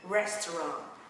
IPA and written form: ˈrestrɑːnt (restaurant)